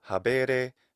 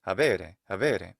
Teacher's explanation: He adds a degree of lenition to the intervocalic B.